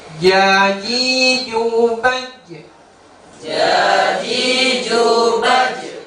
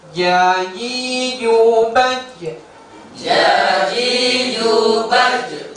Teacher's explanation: Dia tengah-tengah lidah kita itu mengenai langit-langit yang ada di atasnya. Tengah-tengah lidah kita itu mengenai langit-langit yang ada di atasnya. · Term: huruf jim